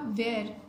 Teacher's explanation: वेयर में हमें व के साथ ह की भी साउंड आ रही है, एस्पिरेटेड डब्ल्यू है ये